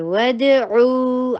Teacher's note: دال کے اوپر قلقلہ کیجیے، دال میں آواز کو باؤنس کریں گے